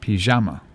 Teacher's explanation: they put the emphasis on the middle syllable